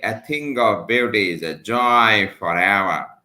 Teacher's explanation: an unstressed syllable followed by a stressed syllable